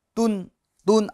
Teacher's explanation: दो पेश है तो नून साकिन आ जाएगा, तुन, तुन, आखिर में नून साकिन की आवाज़ आएगी क्योंकि तनवीन असल में नून साकिन होता है